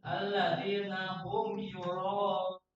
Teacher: Tapi alladzina hum yura langsung dibaca jelas. Jangan didengungkan digunakan. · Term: idhar sapawi